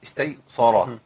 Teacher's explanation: شاء الله تبارك الله طب نكمل فان احصرتم فما استيسر برضه السين هنا ممكن تقول قلب الى صاد استيسر لان الراء مفخمه